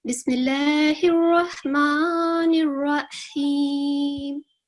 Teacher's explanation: اس میں یہ لام الجلالہ ہے، اس سے پہلے کسرہ کی علامت ہے، اس لیے اس کو ہم تھن پروناؤنس کریں گے